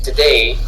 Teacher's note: Accentuation de la première syllabe de today.